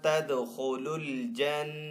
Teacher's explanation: نون مشدد کے اوپر ہمیشہ غنہ ہوتا ہے، تو یہاں پہ نون کے اوپر غنہ بھی کریں گے